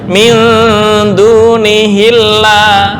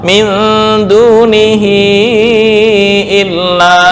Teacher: misal hamzahnya adalah hamzah wasal, maka membacanya min dunihillah, tapi berhubung hamzah qata', min dunihi illa